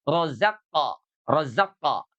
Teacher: Di manakah makhrajnya huruf qaf? Pangkal lidah yang diangkat ke langit-langit.